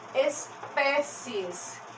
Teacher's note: Pé é a sílaba mais forte aqui dessa palavra. E não é P, é pé.